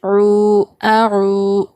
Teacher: عین واو پیش عو، واو ساکین سے پہلے پیش ہو تو یہ واو مدہ ہوگا، حروف مدہ. ہم اس کو ایک الف کے برابر کھینچ کر پڑھیں گے